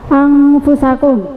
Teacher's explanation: nun sukun bertemu fa bacaan apa itu? Ikhfa ya dibaca dengung